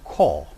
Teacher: a second type of articulation namely labialization because you have lip rounding as in core